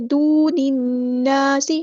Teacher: دون الناس نہیں پڑھیں گے، دون الناس، نون کو ہم نون کے ساتھ ملا دینا ہے، حمزۃ الوصل ہمارا ڈراپ ہو جائے گا۔ لام پر یہاں پر لام جو ہے وہ لامی شمسی ہے، اس کو ظاہر نہیں کریں گے۔ · لام جو ہے وہ لامی شمسی ہے، اس کو ظاہر نہیں کریں گے۔ نون پہ غنہ زمانی ہو رہا ہے، ایک الف کے برابر ہم یہاں پہ رکیں گے۔ دون الناس، الف مد آ گیا تو مد اصلی کریں گے، سین کی سیٹی ہم واضح کریں گے۔